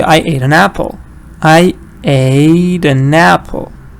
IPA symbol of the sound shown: ə